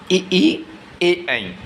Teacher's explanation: जिन स्वरों के उच्चारण में जीभ का अग्रभाग कार्य करता है उसे अग्रस्वर कहलाते हैं।